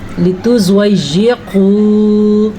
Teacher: زواد کو پر کرنا ہے کیونکہ زواد حروف مستعلیہ میں سے ہے. یا پہ شد ہے، شد کو ادا کرنا لیکن لمبا نہیں کرنا.